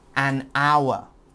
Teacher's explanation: hour because the h is silent so it makes the o u sound